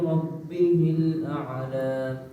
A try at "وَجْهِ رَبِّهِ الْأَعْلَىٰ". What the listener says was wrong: اعلی عین کو ہلانا نہیں ہے. وجه ربه الأعلى